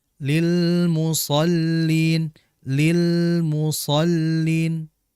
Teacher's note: Perhatikan di lam yang kedua, di situ ada lam yang bertanda sukun atau sakin atau mati. Maka jelaskan lam ini dengan sifatnya tawassut, mengalir sebentar.